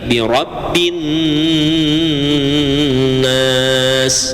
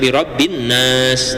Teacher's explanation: Kalau huruf nun atau huruf mim bertasdid, maka ini dibacanya harus dengung. Nama hukumnya adalah gunnah musyaddadah, ya.